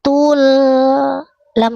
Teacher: sukunnya terang jelas sedikit mengalir jangan tule